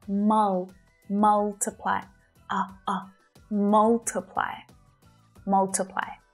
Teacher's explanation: So take a look at the stressed vowel sound, right? It's short. It's that sound as in up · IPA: /'mʌltɪplaɪ/